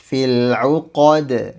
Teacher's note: Jadi huruf dal di sini dibaca tipis, qalqalahnya maksudnya. Jadi pantulannya harus tipis